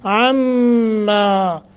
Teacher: میم مشدد ہے یہاں کیا کریں گے غنہ کریں گے